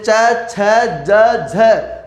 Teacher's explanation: तो च वर्ग के शुरुआत के जो चार वर्ण है, च वर्ग के शुरुआत के जो चार वर्ण है वो जैसे च छ ज झ, वो किस में आ जाएंगे, स्पर्श संघर्षी में। यानी कि स्पर्श करने के साथ में इसमें बोलते समय घर्षण भी होता हो